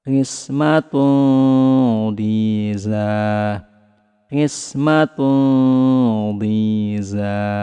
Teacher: Kemudian lidah kita bersiap ke huruf dhad. Suara samarnya lebih ditebalkan karena huruf dhad merupakan huruf tebal.